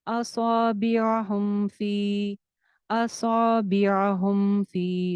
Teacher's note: हुम फी के ऊपर मद है जिसको दो अलिफ लंबा करेंगे।